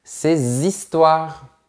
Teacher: Attention, ici le H est muet, donc on fait bien la liaison